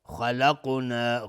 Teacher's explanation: ممن خلقنا، نون ساکن بهش خا اظهار حلقی. خلقنا، خا از حروف استعلاء غلیظ تلفظ میشه